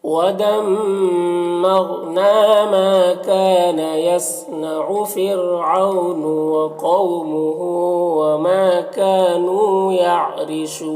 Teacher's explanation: رائے ساکنہ سے پہلے فا کے نیچے زیر اصلی ہے تو را کو باریک پڑھیں گے۔ او میں واو لین ہے۔